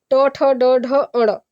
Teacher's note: ट ठ ड ढ अण, ये वर्ण जो होते हैं वो मूर्धन्य होते हैं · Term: मूर्धन्य वर्ण